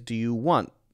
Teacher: so it's stopping but I'm not hearing the T sound but it's not a do you wah it's do you want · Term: stop sound